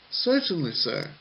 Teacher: Certainly sir has a falling intonation at the end.